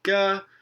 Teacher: so that's before uh the sonorant ra we have a voiced stop